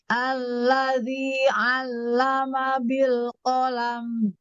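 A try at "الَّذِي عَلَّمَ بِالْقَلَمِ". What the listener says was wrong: Yuk, kurangi hentakannya. Alladzi, jangan alladzi allama bil qalam. Jangan. Kita upayakan tidak ada hentakan. Ringankan lagi.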